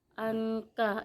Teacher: ifa hakiki karena ada nun mati bertemu dengan huruf ka. Cara membacanya samar-samar.